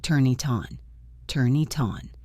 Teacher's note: For example, look at the phrase "turn it on." When we say this naturally, the N in turn moves over to the I in it, and the T in it moves over to the O in on. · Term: linking